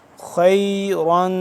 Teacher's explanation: تنوین ہو گیا تو یہاں پہ ہم غنہ کریں گے اس پہ اخفا کریں گے